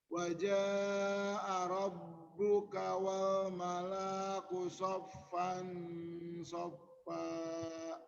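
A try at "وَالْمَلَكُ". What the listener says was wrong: Wal malaku, pendekin wal malaku.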